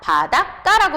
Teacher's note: 까까까 하고 된 소리로 발음이 되죠. 사이소리 현상이 일어났어요.